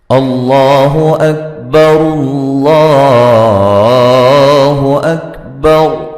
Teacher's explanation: یہ حمزہ جو ہے وصلی گر جائے گا، را کو لام کے ساتھ ڈائریکٹ ملا دیا جائے گا۔